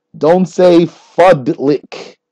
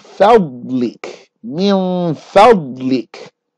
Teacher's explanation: Bod is a thick letter. It comes from the side of your tongue. It's not a dal.